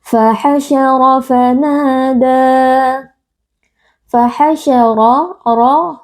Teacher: ro Huruf tebal karena ro berharakat fathah kita baca dengan mengangkat pangkal lidah